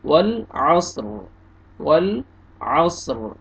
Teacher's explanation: वक्फ की सूरत में रा साकिन हो जाएगा। वल असर, वल असर, रा को पुर करेंगे।